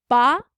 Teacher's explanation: Ba, so that's at the front of the mouth, that's produced with the lips.